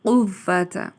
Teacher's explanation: لا حول، ہا کو باریک ادا کیا جائے گا، اور یہ واؤ سے پہلے زبر ہے تو حروف لین ہے، نرمی سے ادا ہوتے ہیں۔ قوت، واؤ کو سختی سے ادا کیا جائے گا دوہری بار، کیونکہ اس پہ شد ہے، اور قو کی آواز کو پر ادا کیا جائے گا۔ قوت، الا کو اسٹریچ کیا جائے گا کیونکہ یہ حروف مدہ بھی ہے۔